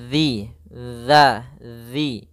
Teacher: makhrajnya, tempat keluarnya adalah ujung lidah kita menempel dengan gigi seri atas, dan dia kalau bisa sedikit tergigit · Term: zal